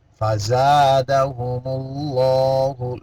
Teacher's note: لفظ اللہ یہاں موٹا پڑھیں گے